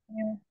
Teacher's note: এই মিম অক্ষরটা 2 ঠোঁটের শুকনো জায়গা থেকে উচ্চারণ হবে আর 4 আলিফ টেনে পড়তে হবে।